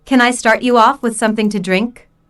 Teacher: with something to drink notice how the question starts with can since this is a yes slash no question the intonation Rises at the end